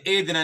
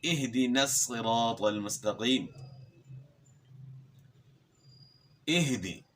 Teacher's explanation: ہا کو جو ہے گلے کے آخر سے صحیح طریقے سے ادا کرنا ہے، یعنی ایدنا نہیں پڑھنا، اہدنا پڑھنا ہے، اہدنا الصراط المستقیم، اہدی۔ حمزہ اور ہا دونوں جو ہے گلے کے آخر سے ادا ہوتے ہیں